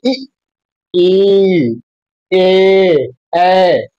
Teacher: अग्र स्वर हमारे जीभ के किस हिस्से से आता है, तो अगले हिस्से से आता है, ठीक है, आगे वाले भाग से आता है।